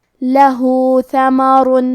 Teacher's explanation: کلمت لہو میں ہا پہ الٹا پیش ہے، یہاں حکم ہے مد صلہ صغرا، ہم اپنی آواز دو مد کے برابر لمبی کریں گے